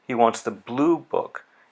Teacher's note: the stress is on the word blue, but the falling intonation is still there